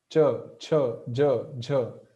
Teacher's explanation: So our tongue is touching the spot just behind the upper teeth. So that is palate, talu.